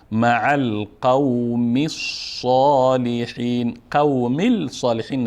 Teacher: حرکت آخر میمه به صاد که مشدد هست میچسبانیم